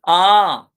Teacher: Back open अनराउंडेड मोनोप्थोंग। ये अनराउंडेड है, rounded हमारे 4 हैं, ये हमारा अनराउंडेड है।